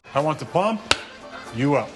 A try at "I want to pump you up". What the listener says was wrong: You put the emphasis on the wrong syllable.